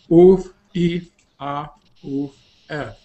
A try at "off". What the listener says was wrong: Vale, la O la has hecho mal. Es off. Vale, es que has dicho una U.